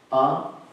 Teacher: The first letter A is the root sound, the key pronounced without touching any part of the tongue or palate.